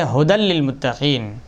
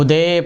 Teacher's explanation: ساکنین کی وجہ سے وصل کلام میں گر جائے تو اس میں امالہ نہ ہوگا اور حالت وقف میں امالہ ہوگا